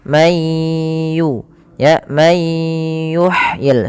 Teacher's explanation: May yuhyil idoma itu gunah nun sukun ketemu ya. Cara bacanya masukkan nunnya ke ya sehingga bunyinya diganti dengan huruf ya. Mayyu ya may yuhyil sambil ditahan dua harakat.